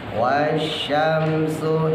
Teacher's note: shin yang pertama ya, jangan lupa tebal, yang kedua baru tipis